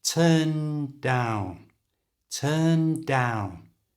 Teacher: start saying the n as your tongue goes up and then as it starts to come down then say the D